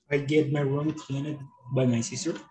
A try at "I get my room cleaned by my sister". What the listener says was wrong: The correct pronunciation will be cleaned with a D.